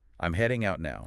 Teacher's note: Those are your 3 beats. The little word I'm just attaches to the beginning of heading. · the key info is the action, the direction, the time. So heading out and now. Those are your 3 beats.